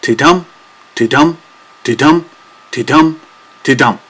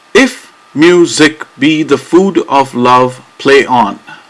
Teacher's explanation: each line consists of 10 alternating unstressed and stressed syllables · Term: iambic pentameter